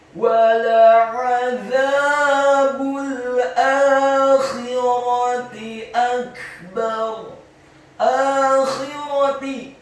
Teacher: Akhirati, huruf alif atau hamzanya dibaca tipis, fathah 2 harokat karena harokatnya tegak. Kemudian huruf kha-nya dibaca tafkhim, tebal dengan posisi bibir bawah kita agak tertutup, khi.